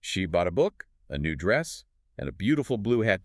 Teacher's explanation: the word hat gets the highest pitch and the most emphasis. It marks the end of the list. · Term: tonic stress